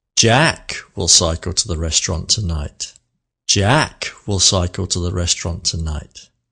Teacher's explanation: The meaningful word, the slow word, with a little pause after it, with a bit of melody, was number 1, sentence number 1, Jack. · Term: stressing a word